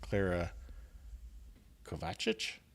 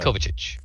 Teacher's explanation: I put the emphasis on the second syllable there again